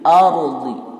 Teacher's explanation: Yah, itu seharusnya tidak terlalu berlebihan karena dia hanya bergetar dua kali saja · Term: takrir